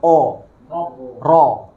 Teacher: pas ro, o itu kan bunyinya o, mulutnya dibulatin